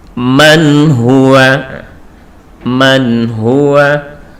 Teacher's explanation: tanpa ada dengungnya sama sekali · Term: idhar